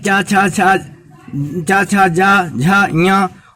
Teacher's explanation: इनका तालव्य तालु से उच्चारण होते हैं। इसलिए इन्हें तालव्य वर्ण कहते हैं। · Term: तालब वर्ण